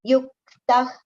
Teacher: Yuktah, kha should not be pronounced. The visarga sound should be heard like kha. So just the exhalation.